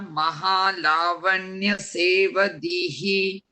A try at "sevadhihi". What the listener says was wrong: Sevadhihi. Yeah, there is no dirgham at the end.